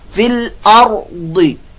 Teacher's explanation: फिल अर्दी रा पुर मोटा, रा साकिन से पहले जबर पेश है तो रा पुर मोटा, दौद हरूफ मुस्तालिया में से, इसलिए ये भी पुर मोटा पढ़ा जाएगा।